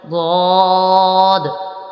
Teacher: اس کے بعد ہے غاد، غاد یہ حروف موٹا بھی پڑھا جائے گا چونکہ حروف مستعلیہ میں سے ہے، اور غاد کا مخرج ہے زبان کی کروٹ اور اوپر کی داڑھوں کی جڑ سے یہ حرف ادا ہوتا ہے